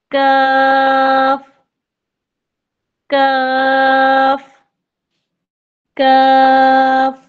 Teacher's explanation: जब जुबान का पिछला हिस्सा जब यह उठकर सख्त तालू से लगता है तो काफ अदा होता है। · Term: काफ का मखरज